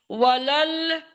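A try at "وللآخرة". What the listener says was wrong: वलल क्यों पढ़ा आपने, वाव को लाम से मिलाना है ना। वलल नहीं है। अरे बाबा, 2-3 बार बोला, वलल नहीं है, वाव को लाम से मिलाना है। वाव लाम जबर वलल होता है या वाव लाम जबर वल होता है। वल।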